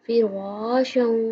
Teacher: رو پر پڑھیں گے، موٹا پڑھیں گے